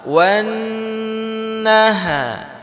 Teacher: Di sini di ayat ketiga kita berjumpa dengan huruf nun yang bertasydid. Nun yang bertasydid. Maka bacaan dengungnya itu harus lama.